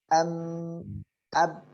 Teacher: والميم والباء يكون بانطباق الشفتين